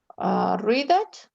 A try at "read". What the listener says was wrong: No, it's actually the word read. es como el color. It sounds like the color red, but read in the past is read.